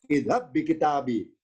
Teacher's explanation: Karena berlaku idgham, nggak berlaku pantulan atau qalqalah.